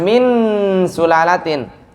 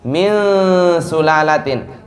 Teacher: ketika ikhfa yang di mulut hilang yang di hidung tetap ada